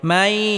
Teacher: জবর মাই নুন সাকিনের পরে ইদগামে বা গুন্নার হরফে আসার কারণে নুন সাকিনকে ইয়ার সাথে গুন্নাহের সাথে মিলিয়ে পড়তে হবে